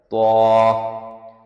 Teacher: طوا کا ساؤنڈ ٹنگ کے ٹپ سے پیلیٹ کے نیچے کے حصے سے نکلتا ہے اور زیادہ ہوا کا پریشر ہوتا ہے